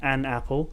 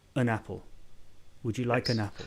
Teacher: you don't pronounce it like it's a separate word you just pronounce it like it's a prefix really